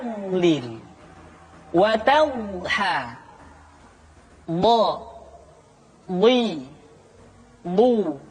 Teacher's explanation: di antara sifat yang menonjol padauc apa pengucapan huruf d adalah sifat alistitalah yaitu suara kita memanjang dan terdengar lembut suaranya ketika diucapkan